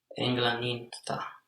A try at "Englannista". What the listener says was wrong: Now you had extra N there. Englannista, very good.